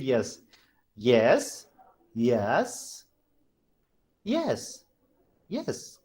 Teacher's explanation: there is something called falling and rising tone first fall then rise fall then rise